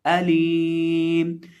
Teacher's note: लाम को एक अलिफ के बराबर यहाँ खींच के पढ़ा जाएगा।